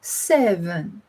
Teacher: It's a hard S sound called a fricative, followed by the softer V and N. You can hear that it has three building blocks or phonemes instead of the two of the number 8.